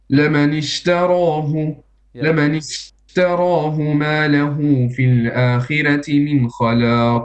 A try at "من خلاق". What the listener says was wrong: Okay, your raw is a bit too flat. من آخر raw. Make it a bit heavy.